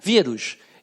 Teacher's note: Qual é a sílaba mais forte? Quando você fala vírus, é o rus? Não, é o vi, não é verdade? Vírus. Então é na pronúncia, na prosódia que você percebe.